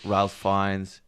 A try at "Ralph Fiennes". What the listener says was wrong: You have to say Rafe. His name is Rafe. It's pronounced Rafe, not Ralph.